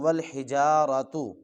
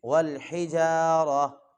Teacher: اگر وقف نہیں کرنا تو، اگر وقف کرنا ہے تو پھر تا آخر میں ہا کی آواز دے گا، والحجارہ، را، جی ہا کی آواز آنی چاہیے.